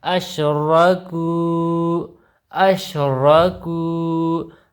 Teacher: را زبر را، کاف وو پیش کو، وو مدہ ایک الف کے برابر لمبا ہوگا